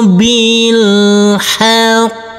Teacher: huruf qof yang bertasid ini harus kita tekan, kita tahan baru kita pantulkan. Kita tahan, kita tekan baru kita pantulkan. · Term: huruf qof bertasdid